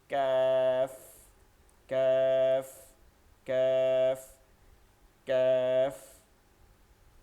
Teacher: জিহ্বার গোড়া থেকে একটু আগে বাড়িয়া তার বরাবর উপরের তালুর সঙ্গে লাগাইয়া কোন বরাবর ওই গোড়া থেকে একটু আগে যে বাড়াবেন ওই বরাবর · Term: পাঁচ নম্বর মাখরাজে